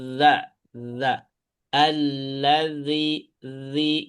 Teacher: Jadi ujung lidah ke ujung gigi atas. Za ini keluarnya dari ujung lidah dengan ujung gigi seri atas. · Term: rokhawah za